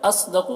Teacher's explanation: اصدق صاد کو پر پڑھنا ہے، حروف مستعلیہ میں سے ہے۔ قاف کو بھی پر پڑھنا ہے، حروف مستعلیہ میں سے